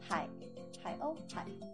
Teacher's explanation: In the third tone, hai means ocean